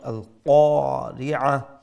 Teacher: qaf is the big qaf as we know. So it is going to be with a fuller sound